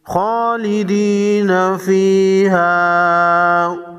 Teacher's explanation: خا حروف مستعلیہ میں سے ہے، موٹا پڑھیں گے